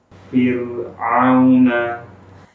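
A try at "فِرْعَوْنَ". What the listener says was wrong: Ini wawunya masuk hidung, ya. Au harus tidak boleh masuk hidung. Ini masalahnya adalah di huruf ainnya. Huruf ainnya sudah masuk hidung jadi ke bawah-bawah. Di setelah huruf waw yang sukun huruf nun pula, ya. Jadi saling mempengaruhi.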